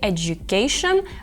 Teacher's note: в слові Education звук наближається до Дж